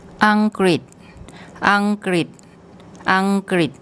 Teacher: Then this character which makes a kind of RI sound, and it finishes up with an S consonant, which as a final consonant makes a T sound